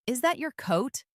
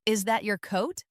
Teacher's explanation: For example, when a native speaker asks a yes or no question like, "Is that your coat?" The pitch of their voice goes up at the end. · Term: intonation